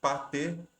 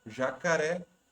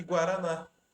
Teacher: as 3 palavras, a sílaba tônica ou o acento estão na última sílaba. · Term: oxítonas